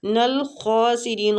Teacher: خا کو پور پڑھیں گے، مستعلیہ ہے یہ